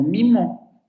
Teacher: nosotros tenemos una I nasal en contextos como mimo, porque la nasalidad de las consonantes se le pega a la vocal